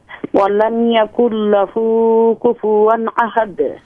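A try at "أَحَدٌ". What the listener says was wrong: ولم یکن لہ کفوا احد. احد یہ دال پہ شد نہ لائیں. احد احد نرم کر کے. احد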